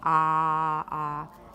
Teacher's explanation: Your lips are not particularly spread, nor are they particularly rounded. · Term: cardinal vowel number 5